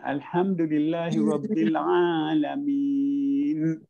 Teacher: Seolah-olah alamin tu mim baris bawah terus nun mati. Padahal dia ada mim ya nun. So maknanya dia kena Alhamdulillahirabbil alamin.